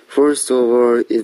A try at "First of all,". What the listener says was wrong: 자, 이 경우에도 first of all 하고 무너지고 있어요. 그래서 first of all, first of all. 항상 first of all 뒤에 컴마가 있는 자리는 잠깐 퍼즈를 넣어서 쉬어줘야 되는데 이 학생은 first of all 하고 바로 문장이 연결돼요. 그래서 저는 first of all 이렇게 끊어주고요.